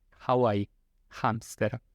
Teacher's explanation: En algunos lugares de América Latina se pronuncia de esta manera, en España también, pero es básicamente como en Hawái o en hamster, o como la H en inglés, que no tiene ese sonido fuerte de la garganta que es como la J nuestra, sino que es más suave. Es Hawái, hamster, J, ¿no?